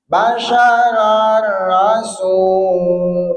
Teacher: ngarepan huruf ro ngarepan huruf lam eta ulah digunah ngaranna idgham bila gunnah